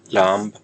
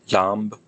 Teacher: If there's a nasal consonant before it, then you get lamb with a hard B, not like in English lamb.